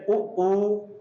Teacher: जिनको बोलने में होंठ की आकृति गोल बन जाती है, वो वृत्तमुखी हो गए